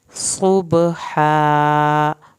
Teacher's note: صاد کو پر کرنا ہے، با پہ قلقلہ کرنا ہے، ہا کو حلق سے پڑھ کے الف ساتھ اٹیچ ہے اس کو پورا پڑھنا ہے۔